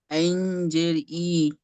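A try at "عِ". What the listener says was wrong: ই টান হবে না, আইন জের ই, ই টান হবে না, হারাকাত তো, হারাকাত টান হবে না।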